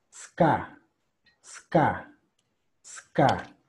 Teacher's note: Esa E la vamos a omitir y vamos a empezar con la S.